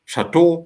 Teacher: stress falls on the last syllable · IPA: [ʃa'to]